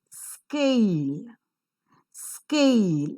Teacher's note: The k, because it doesn't occur in the initial position of the word, is not aspirated. So it doesn't have the h sound there.